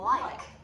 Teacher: the tongue tip comes through the teeth, so it looks a little bit like a TH. And the tongue tip presses up on the front teeth here.